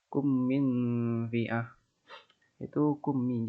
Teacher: Idgham mimi atau idgham mutalasi lain sangat mudah diingat, yakni ketika huruf mim mati bertemu huruf mim dengan cara melafalkan bacaan tersebut adalah membaca huruf mim merangkap secara mendengung